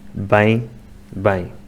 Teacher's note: pronunciam os vês como bebês que não é o som correto · As palavras vem e bem são diferentes, mas no norte ficam iguais.